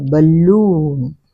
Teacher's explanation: బలూన్, ల మీద stress పడుతుంది